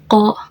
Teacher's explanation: ko itu keluar dari pangkal lidah atau lidah yang paling belakang dan langit-langit lunak itu saling berdekatan